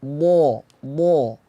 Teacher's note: Di bo. Nah, bo itu dia bersifat itbaq, artinya mulut lidah kita itu melengkung, mengumpulkan nafas di tengah lidah.